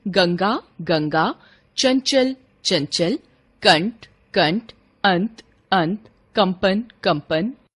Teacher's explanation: अनुस्वार के उच्चारण में श्वास वायु नाक से निकलती है। जबकि अनुनासिक के उच्चारण में वायु नाक और मुंह दोनों से एक साथ निकलती है।